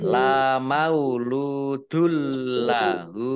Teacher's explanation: Masuk dengan tidak mendengung, yaitu langsung masuk ke huruf lam, ya, ditandai lamnya ada tasdidnya. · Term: idgham bila gunnah